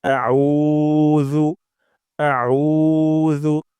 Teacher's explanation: সামনের উপরে দুই দাঁতের আগা থেকে আউজু এবং উতে অবশ্যই অবশ্যই এক আলিফ টান দিব অর্থাৎ দুই সেকেন্ড পরিমাণ লম্বা করব · আমরা আইন উচ্চারণ করব গলার মাঝখান থেকে আউ আউ হামজা শক্ত, আইন গলার মাঝখান থেকে। তারপর যু, যু উচ্চারণ করব জিহ্বার আগা, সামনের উপরে ২ দাঁতের আগা থেকে আউযু এবং তে অবশ্যই ১ আলিফ টান দিব।